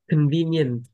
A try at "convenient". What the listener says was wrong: Trời, âm đuôi đó. Đọc không nghe được.